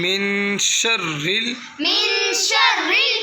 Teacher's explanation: را کے نیچے زیر ہے را کو پر نہیں کرنا